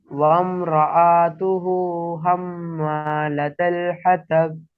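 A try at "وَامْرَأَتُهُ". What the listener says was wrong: रआतुहु नहीं, रअतुहु।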